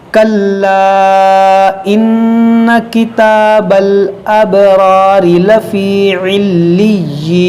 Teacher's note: مد منفصل ہے، حرف مدہ کے بعد حمزہ دوسرے کلمے میں ہے. کلا الگ کلمہ ہے، انا دوسرا کلمہ ہے، اور یہاں با میں قلقلہ ہوگا.